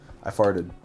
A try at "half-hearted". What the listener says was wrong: when you say half-hearted, it kind of like sounds like you're saying I farted. Half-hearted. I'm sorry, half-hearted.